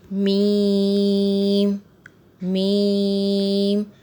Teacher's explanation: دونوں ہونٹوں کے خشک حصے سے میم ادا ہوتا ہے